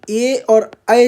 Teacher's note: ए और ऐ जहां आएगा वहां कंठ और तालु उसका उच्चारण स्थान होगा। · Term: कंठ तालु